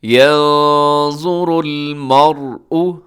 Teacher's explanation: آگے يَنظُرُ الْمَرْءُ، يَنظُرُ، یہاں نون ساکن ہے، نون ساکن کے بعد حرف ظا موٹا بھی پڑھا جائے گا، اور یہاں اخفا بھی ہوگا، نون کی آواز آپ چھپائیں گے ناک میں۔ يَنظُرُ الْمَرْءُ، مرء میں را موٹا پڑھا جائے گا کیونکہ را ساکن ہے۔